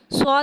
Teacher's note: صاد کو ایک الف یعنی 3 حرکات کے برابر کھینچ کے پڑھیں گے. صاد میں سیٹی کو ظاہر کر کے پڑھیں گے.